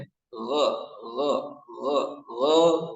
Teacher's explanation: huruf gain tidak boleh memantul jadi harus ditahan makhraj nya ada di mana tenggorokan eah tenggorokan paling atas itu · Huruf ghain tidak boleh memantul. Jadi harus ditahan.